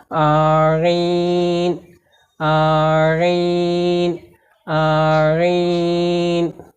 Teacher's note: আইনকে কণ্ঠনালীর মাঝখান থেকে একটু চেপে উচ্চারণ করতে হবে। · যেমন আইন, আমার সঙ্গে সঙ্গে কণ্ঠনালীর মধ্যখানে আঙ্গুল দিয়ে আপনারাও প্র্যাকটিস করুন যে আইন অক্ষর কণ্ঠনালীর মধ্যখান থেকে বা মাঝখান থেকে একটু চেপে পড়তে হয়